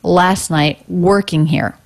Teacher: working here stress stress unstressed unstressed last night working here so the ing ending and the word here flatter lower in pitch coming down in vocal energy